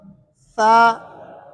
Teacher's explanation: ثا کے اندر آواز بھی جاری رہے گی اور ثا کے اندر سانس بھی جاری رہے گی، سانس بھی جاری رہے گی اور آواز بھی. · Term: صفت ہمس